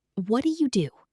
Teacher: Do you often blends into jew? So it sounds like what do you do? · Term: connected speech